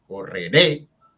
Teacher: es una palabra que tiene 3 sílabas, pero la fuerza de entonación está en la última